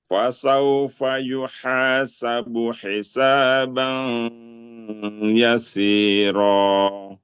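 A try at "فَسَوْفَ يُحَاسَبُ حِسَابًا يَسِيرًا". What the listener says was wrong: Nah, masukkan ke ya. Bukan ban, tapi bayi.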